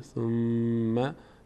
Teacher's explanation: میم وقتی که تشدید داره روش وا میستیم مقداری